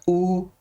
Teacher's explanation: जब ऊ का उच्चारण करते हैं तो आप महसूस करना दोस्तों, जीभ का जो पिछला हिस्सा है वो ऊपर की ओर उठता है, ऊ। आप बारीकी से इन चीजों को समझेंगे तो सारा तथ्य आपको समझ में आ जाएगा।